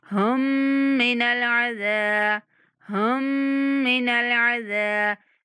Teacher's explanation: हम यहाँ मुशद्दद मीम पर गुन्ना करेंगे।